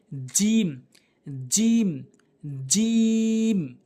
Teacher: জিহ্বার মাঝখানের অংশটা উপরে তালুর সঙ্গে লাগাতে হবে। উপরে তালুতে লাগাবেন, তাহলে জিম সঠিক উচ্চারণ হবে।